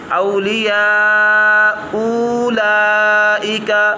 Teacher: دوسرا حمزہ واو سے بدل جائے گا